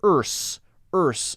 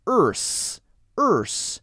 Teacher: your tongue is curled back and up and then flicks forward into the s